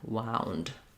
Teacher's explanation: Or if you're talking about wound, like I wound the clock, we have the ow diphthong. So there I go unrounded for the ah part of the ow, and then I'm rounding again, wound.